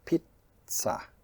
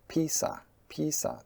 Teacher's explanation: Pizza has a stop: pizza, and Peesa Peesa, there's no stop, or pissa, it's faster, there's still no stop. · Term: TS sound